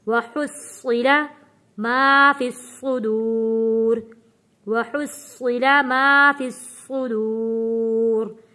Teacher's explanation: صوت کے اوپر تشدید ہے، یہاں پہ پہلے ہم رکیں گے، سختی کے ساتھ صوت کو ادا کرنا ہے